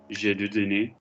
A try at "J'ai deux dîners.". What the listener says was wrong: Do you see how when we go smoothly, you lose the vowel accuracy? Visualize a line like I, U, where are we? Dîner, like I. You start to feel where are you going on this sort of like j'ai deux dîners.